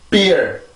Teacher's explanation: 폐쇄음의 특징은 목에서 올라오는 공기를 한번 탁 막아두고 그러고 나서 모인 공기를 내보내는 소리가 바로 폐쇄음들인데 지금 비 발음도 목에서 올라오는 공기를 한번 막죠. 입술로. 한번 강하게 막아준단 말이에요.